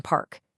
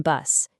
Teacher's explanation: For an unvoiced sound like the P sound in park, say it out loud. You'll only feel air passing, absolutely no vibration. But for its voiced pair, the B sound in bus, you'll instantly feel your vocal cords vibrate, creating this very distinct buzz against your fingers. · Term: voicing